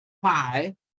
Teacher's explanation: the two lips come together, closing the mouth. Then there's a sudden relief, and that is why it is called a stop or plosive.